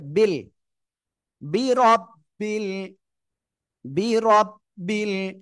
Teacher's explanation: রর উপরে জবর মোটা আওয়াজে পড়তে হবে।